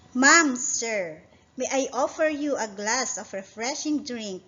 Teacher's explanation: It's a rising intonation because it is answerable by yes or no